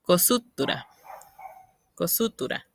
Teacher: Esa U previa a la tónica es muy suave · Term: síncopa pretónica